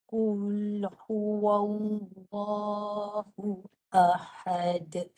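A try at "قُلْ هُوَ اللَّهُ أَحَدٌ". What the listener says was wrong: Lam yang tebal tu tak bunyi. Huwallahu. Keluar kat mulut.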